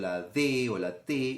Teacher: Si pronuncio la D o la T, la lengua le cierra la salida al aire, ¿sí? Tocando los dientes en la parte superior, y por eso la consonante se denomina dental en este caso.